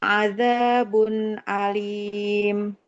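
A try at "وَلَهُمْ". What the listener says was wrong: Huruf H-nya nggak boleh terlalu hum ya. Walahum. Nah, jadi huruf H itu tidak hahihu ya. Tapi hahihu. Walahum.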